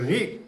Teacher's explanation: रि, रि का उच्चारण जब हम करते हैं रि, तो ये मूर्धा से होता है।